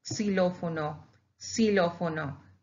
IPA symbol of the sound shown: ks